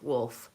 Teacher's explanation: I do actually say that L in wolf, wolf. Otherwise it would sound like woof.